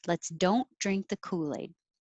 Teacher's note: i'm not pronouncing the t on don't it'll just connect and sound like don't drink let's don't drink the kool-aid number